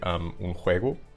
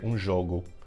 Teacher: we can see again the [x] and the ZH sound where they're both spelled with J but they're pronounced differently